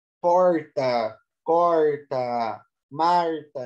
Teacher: Esse R aí, retroflexo, né? Que é típico do interior do Brasil também. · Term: R caipira